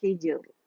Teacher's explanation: ये रॉ बारीक है, ठीक है, क्योंकि रॉ साकिन से पहले हमारे पास साकिन और उससे पहले हमारे पास कसरा आ रही है